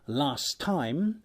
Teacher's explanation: illusion primarily effects alveolar plosive consonants as in last time where the final alveolar plosive of last disappears under the influence of the next word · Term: Flanking elision